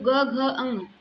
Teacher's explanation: ग घ अ ङ इन्हें बोलने के लिए स्वर तंत्रियों में कंपन पैदा होता है। इसलिए हम इसे सघोष की श्रेणी में बोलते हैं।